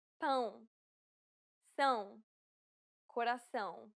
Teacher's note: it is similar to the ow sound in English but with nasality